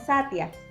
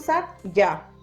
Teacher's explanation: Es como una pequeña I acompañada de la vocal que sigue, en este caso la IA. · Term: semivocal